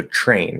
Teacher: And this has to do with, again, the physical mechanics of releasing the T and going into the R. It's actually easier to sort of just slur it into a CH, blend it into a CH, and then pull into the R instead of trying to get a nice clear T.